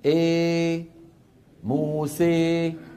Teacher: كبرى بين الالف والياء تماما يعني 50% الف 50% ياء شوف شوف شوف الفم الفم مفتوح وبنفس الوقت وسط اللسان ايه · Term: الاماله الكبرى